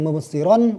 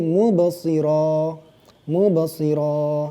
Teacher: Jadi di situ ada tanda waqaf. Asalnya kalimatnya mubsiran. Tapi kemudian kita waqafkan karena ada tanda waqaf, jadilah bacaannya mubsiran menjadi mubsira. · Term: mad iwad